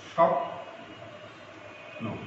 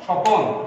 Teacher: এখানে একটা স্বরের আগমন ঘটেছে, সেটা হলো শব্দটার মাঝখানে, শব্দটার মাঝখানে যে বর্ণটা আছে এখানে একটা স্বরের আগমন ঘটেছে।